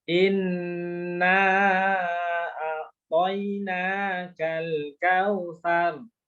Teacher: Nunnya langsung nyentuh ujung lidah langit-langit depan. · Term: huruf nun